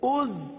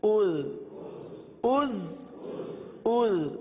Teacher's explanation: زا میں تو سیٹی کی آواز آئے گی، زال میں نرمی ہوگی